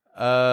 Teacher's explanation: We want that strong, but then the W glide is fading and the T is very soft and very quiet.